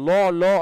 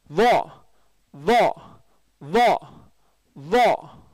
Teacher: மூணாவது வா, நீங்கள் லோ லோ அப்படின்னு சொல்லுவாங்க, அதுக்கு அப்படி சொல்லக்கூடாது, வா வா வா வா, சரிங்களா? நீங்கள் லான்னு சொல்லும் போது நாக்குள்ளே போயிடும், அது நுனி நாக்கு வச்சு சொல்லுங்க